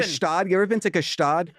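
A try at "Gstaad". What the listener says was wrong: Oh my God, it's called Stad. You don't pronounce the G.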